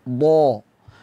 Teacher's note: do hurufnya tebal suara mengarah ke atas makhrajnya ada di sisi lidah bertemu dengan geraham atas